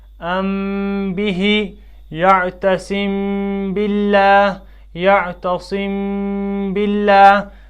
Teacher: اب اخفا کی تعریف کیا ہے کہ میم ساکن کو ہمیں نرمی سے ادا کرنا ہے، اور اس کے بعد جو ایک الف کے بقدر صفت غنہ کی جو صفت ہے اس کو کھینچ کر پڑھنا ہے